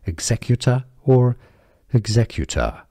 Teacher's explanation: the R is pronounced in American English